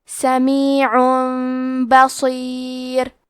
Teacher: تو ہم تنوین کو ہلکی میم میں بدل کے اور غنہ کے ساتھ یہ حکم کو ادا کریں گے. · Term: قلب